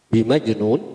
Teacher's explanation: Jim dibaca mantul karena dihukumi atau huruf qalqalah. Tapi di sini disebut qalqalah sugra karena sukunnya asli.